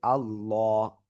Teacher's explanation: তো আবারও বলছি, আল্লাহ শব্দের লাম এর ডাইন পাশে যদি জবর বা পেশ হয়, আল্লাহ শব্দের লামটা আমরা মোটা আওয়াজে পড়ব, তখন হবে আল্লাহ।